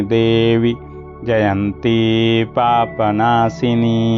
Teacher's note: देवी नहीं बोलना है, ये ह्रस्व होगा क्योंकि संबोधन का रूप है, हे देवी